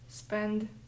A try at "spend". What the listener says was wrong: Ты четче конечный звук произноси, а то я как-то не понимаю.